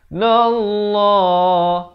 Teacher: Wajibul gunnah dengan 2 harakat. Nallah, lafz jalalah dibaca tebal 2 harakat